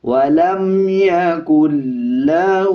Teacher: اکثر لوگ اس پہ غنہ کر دیتے ہیں، ولم پڑھ دیتے ہیں، بلکہ اس پہ غنہ نہیں کیا جائے گا